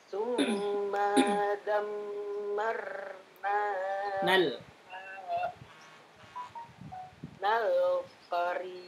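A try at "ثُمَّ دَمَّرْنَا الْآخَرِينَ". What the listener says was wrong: Tsumma dammarnal akharin. Maknya pendek, jangan dipanjangkan. Ingat, tidak ada panjang. Tahan saja. Tsumma dammarnal. Nal, langsung. Ini mad. Mad bertemu dengan hamzah wasl. Ingat, tadi tidak panjang ketika diteruskan.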